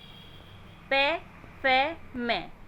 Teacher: बोलते समय दोनों होठ आपस में मिल रहे हैं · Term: ओष्ठ